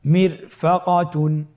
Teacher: র সাকিন তার ডানে এসেছে জের এবং বামে কোনো মোটা হরফ নাই, এই জন্যে রকে পাতলা করে পড়তে হবে